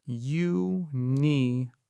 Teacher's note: The word starts with the yuh sound. So, we say a unicorn. Not an unicorn.